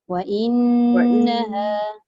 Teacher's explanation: Nun sabdu dia tak boleh tinggal daripada 2 harakat dengung.